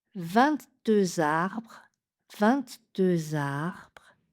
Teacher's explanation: donc le dernier R est très léger